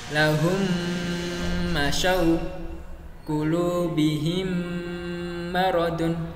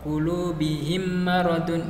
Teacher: ditahan dengungnya. Jangan terlalu cepat sehingga enggak ada dengungnya. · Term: idgham mimi